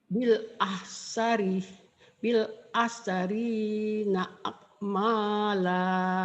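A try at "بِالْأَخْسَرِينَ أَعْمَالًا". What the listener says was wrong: Bukan akmala tapi kayak keselak. A'ma a'mala bil akh bil akh sarina a'mala.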